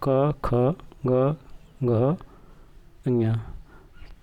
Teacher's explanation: क वर्ग का उच्चारण स्थान कंठ होता है।